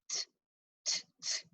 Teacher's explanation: A puff of air comes out.